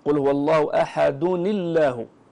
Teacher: فتكسر هذه النون الساكنة بسبب التقاء الساكنين وترقق اللام من لفظ الجلالة